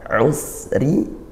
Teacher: Kemudian usri fa inna ma'al usri desiskan sinnya ya, ngalir suara, lepas ngalirnya juga didesiskan nafasnya. Usri, roknya tarqiq tipis karena dia kasroh